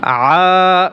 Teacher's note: আইন আলিফ জবর আ গলার ভিতরে চাপিয়ে বলতে হবে